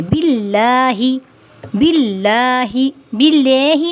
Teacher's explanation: اور باللہ میں جو اللہ کا نام ہے وہ ہم کیسے پڑھیں گے؟ باریک پڑھیں گے